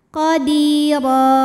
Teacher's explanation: Afuwan qadi, di mad tabi'i dhahiri karena ada ya sukun didahului kasrah, maka dipanjangkan dalnya 2 harokat. Qadira, huruf ra dibunyikan secara tafkhim karena berbaris di atas, maka dibacanya tebal.